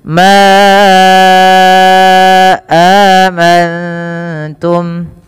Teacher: panjangkan lafal ma sepanjang 4 atau 5 harakat karena ia ada mad jaiz munfasil. Mad jaiz munfasil adalah mad yang terjadi karena adanya mad tabi'i yang bertemu dengan huruf hamzah dan hamzah tersebut pada lain kata.